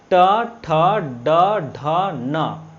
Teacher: ये मूर्धन्य ध्वनि है, ठीक है, मूर्धन्य ध्वनि है।